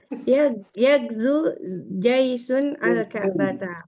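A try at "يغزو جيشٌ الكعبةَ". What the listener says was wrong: Jaisunil Ka'bata, disambungnya yagzu jaisunil Ka'bata.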